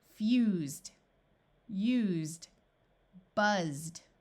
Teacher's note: ED also has the sound of D after the voiced S sound, which is Z, or the sound of Z.